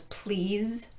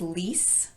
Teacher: we pronounce this word as please with a z sound at the end, but this word as lease with a s sound at the end